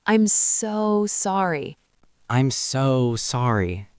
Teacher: We make them longer. Instead of a short, sharp so, we stretch it.